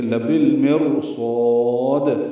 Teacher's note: یہاں پہ المرصاد ہے، را پر پڑھیں گے، لبالمرصاد، صاد کو پر پڑھیں گے، اس کا الف مدہ بھی پر ہوگا اور دال ساکن پہ قلقلہ ہوگا